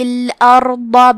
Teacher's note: حرف الضاد کی ادائیگی زبان کے کروٹ اور اوپر کے داڑھوں کی جڑ سے ہے